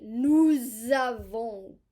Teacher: So remember that this word is nous, we. Normally we do not pronounce the S, but we will because we have a vowel. We'll pronounce it like a Z. Nous avons, we have. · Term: liaison